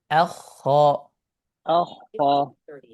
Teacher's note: এই ক্ষেত্রে কিন্তু হামজা হেভি হওয়া যাবে না